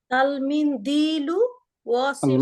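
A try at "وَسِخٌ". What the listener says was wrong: কোনো মাদ নাই, দেখেন ওয়াসিকুন বলে তো ওয়া একটা মাদ হয়ে যায়। ওয়াসিকুন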